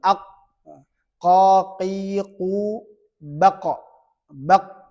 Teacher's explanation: Jadi ini huruf qof ya, jangan sampai ee ke kaf tapi paling dalam